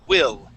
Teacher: instead of saying will and using the Italian I that e sound we want to use a short I